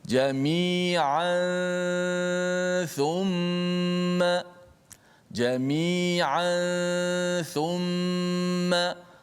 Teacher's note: Bertemu dengan tha, maka dia menjadi hukum ikhfa hakiki. Kita dengungkan dia dan kita sembunyikan makhraj nun mati pada tanwin tersebut.